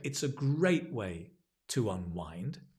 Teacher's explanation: your stress probably on the great